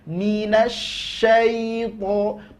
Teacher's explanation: huruf Lin itu yaitu ihraj keluar huruf dengan mudah keluar huruf dengan lembut jadi ndak boleh ada penekanan